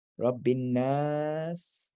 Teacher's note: the double noon, the a vowel, and then the aleph lengthens that vowel